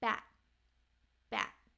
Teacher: the end it's held so it's called a held T and it's like you're about to make the tea but you don't let out the puff of air · at the end it's held so it's called a held T and it's like you're about to make the tea but you